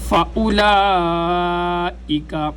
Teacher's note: جو لام کے اوپر مد ہے یہ مد لازم ہے، اس کو 5 الف کی مقدار لمبا کیا جاتا ہے، یعنی جتنے وقت کے اندر 5 دفعہ الف الف الف الف الف پڑھا جاتا ہے، جتنا وقت اس میں لگتا ہے اتنا ہی وقت اس مد کو لمبا کرنے میں بھی لگنا چاہیے۔